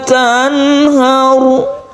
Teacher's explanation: Tanhar ini hati-hati, ini idhar ya, jadi tidak dengungkan. Kemudian roknya ini ditafkhim atau ditebalkan